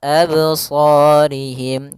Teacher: Kemudian pada lafal sa ada mad tabi'i dan sa-nya harus kita tebalkan.